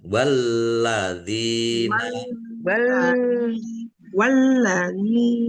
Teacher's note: dal kasrh ya sukun mad thobi'i panjang dua harakat